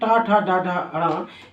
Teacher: ट ठ ड ढ ण ये बोलने पे इनको बोलते हैं मूर्धा से मूर्धन्य व्यंजन